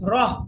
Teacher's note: গোলতা ওয়াকফ অবস্থায় হা হয়ে যায়, তখন কি করতে হবে, এই রগে হাকে ধরবেন, র হা জবর।